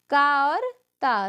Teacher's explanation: अघोष अल्पप्राण ध्वनि जो है वो है का और ता